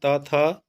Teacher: जीभ का स्पर्श दांत से हो रहा है, यानी कि थ का उच्चारण स्थान दंत हो जाएगा।